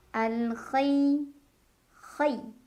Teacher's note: Ada ya sukun sebelumnya fathah namanya huruf lin, dibacanya cukup dilembutkan atau dilunakan saja. · Kemudian ada alif lam qamariyah karena ada alif lam yang menghadapi huruf qamariyah yaitu kha. Cara membacanya lam dibaca jelas.